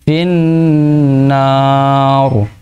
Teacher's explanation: kalau berhenti ditebalkan Pak rohnya